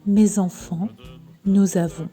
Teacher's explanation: The extra sound Z was added to make the whole pronunciation easier. It comes from the sound connection between the letter S and the vowel sound that is following. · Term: the liaison